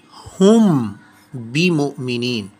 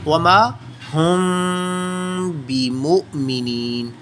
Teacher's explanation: हमारे लिप्स किसी हद तक आपस में टच कर जाएंगे, लेकिन मीम की आवाज़ को हम नाक में घुमाते हुए खुफिया इख्फा के साथ छुपाते हुए अदा करेंगे